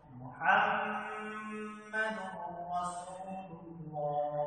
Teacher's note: বিলা গুণনা হচ্ছে র এবং লাম, র এবং লাম, অর্থাৎ নুন সাকিন এবং তানবিনের পরে র এবং লাম হরফ আসলে সেই নুন সাকিন এবং তানবিনকে পরবর্তী হরফের সাথে শুধুমাত্র মিলিয়ে পড়তে হবে, কোনো প্রকার গুণনা করা যাবে না